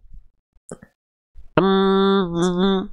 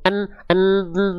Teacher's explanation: Lalu huruf mim juga sama kayak huruf n kayak bunyi en atau bunyi nun sukun atau bunyi konsonan en. Em dan n sama-sama huruf yang suaranya melipir ke rongga hidung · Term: Dengung